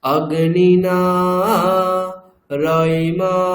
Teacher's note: রইমাশ্নবত, এখানে মকারটা, মকারের উপরে যে অকার সেটা এক্সট্রা একটা স্বর বলবো আমরা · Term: গুরুবর্ণ